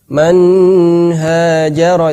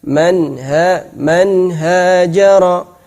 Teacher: Jadi yang penting tidak dibaca panjang nunnya lah.